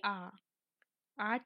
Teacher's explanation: আ কিন্তু না সম্মুখ না পশ্চাৎ, আ কি হবে, কেন্দ্রীয় স্বরধ্বনি ও বিবৃত স্বরধ্বনি। আবার এটিকে আমরা কেন্দ্রীয়, বিবৃত, নিম্ন স্বরধ্বনিও বলবো।